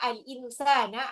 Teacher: nun ketemu sinnya itu adalah ikfa